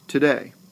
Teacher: That means that the first syllable of to, is an unstressed. I did not put emphasis on to. Today. I put the emphasis on day.